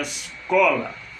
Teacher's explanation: Co é a sílaba forte. Então, primeira, segunda é paroxítona.